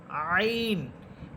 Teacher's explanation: আইন কন্ঠনালীর মধ্যখান থেকে আইন